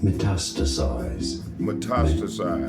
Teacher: Stress on the second syllable.